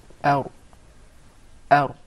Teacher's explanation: That's an English ra now, where the tip of the tongue is far away from the gum.